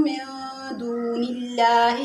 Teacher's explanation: من دون اللہ لفظ اللہ کے نام سے پہلے زیر آ رہی ہے، لفظ اللہ کو باریک پڑھیں گے۔